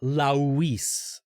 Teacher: English speakers tend to say Louise they add way more vowels to my name than exists